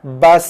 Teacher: Ingat sin mati ada desir dia.